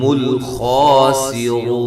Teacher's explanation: خا کو موٹا کرنا ہے، سین باریک ، رو پہ واو مدہ ہے، را کو موٹا کرنا ہے،